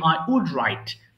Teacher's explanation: এখানে কিন্তু ওল্ড নেই, এল এর উচ্চারণ কিন্তু হবে না। Remember this, you don't need to pronounce L letter here. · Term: silent letter